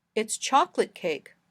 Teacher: in the last sentence we stressed chocolate it gives new information the kind of cake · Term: sentence Focus